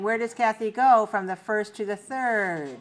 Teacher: falling intonation because it's a wh question